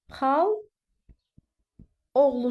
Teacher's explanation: yanaşı gələn saitlərdən biri düşür, amma burada uzanma olmur. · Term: səs düşmə hadisəsi